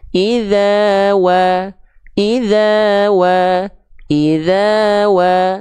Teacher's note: Kedua bibir untuk huruf wawu khususnya dilafalkan dengan posisi maju sebagaimana kita mengucapkan huruf U pada abjad alfabet.